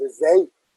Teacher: más bien tiene un tono alto en la segunda sílaba, pero el acento cae en la E. No, y en realidad eso que notan como vibrante, más bien es una E abierta. · el acento cae en la E, y es una E abierta